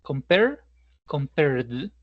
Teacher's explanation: Como la vibración se genera en el último sonido de nuestro verbo, lo vamos a unificar con otro sonido que también vibre.